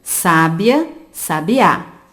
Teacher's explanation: Sabiá apresenta a última sílaba tônica, portanto, nós chamamos de palavra oxítona. Sabia e sábia apresentam a penúltima sílaba tônica, que nós chamamos de palavra paroxítona.